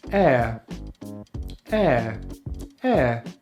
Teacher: and now we have the air diphthong and that's air just as in the substance we breathe. So we start with the jaw mid open, the lips are spread and the tongue is at the front of the mouth for the short vowel /e/, and then we glide into the schwa sound, which we make by keeping our mouth very relaxed, moving the tongue into the center of the mouth and opening the jaw a little bit: air.